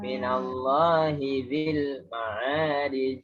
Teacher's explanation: Hinya jangan diseret. Hinya 1.